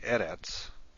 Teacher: In a word like eretz, which means land or earth, the first syllable is accented. So anything other than the last syllable needs to be marked.